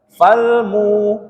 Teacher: Maka dia disebut mat tabi'i waw. Dibaca panjang satu ayunan atau dua harokat saja, tidak boleh lebih.